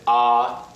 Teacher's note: The first tone is ah. It is a high and level pitch.